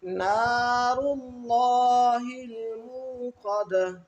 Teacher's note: یہاں پر را بھی موٹا پڑھیں گے اور اللہ کے نام کو بھی موٹا کر کے پڑھیں گے